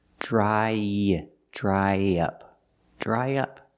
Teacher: To link the vowel I, dry, to the short in up, we need a sound in the middle, y.